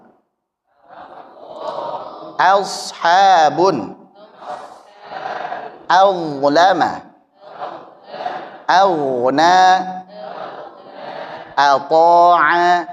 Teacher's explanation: maka hamzahnya tetap tipis jangan terpengaruh dengan tebal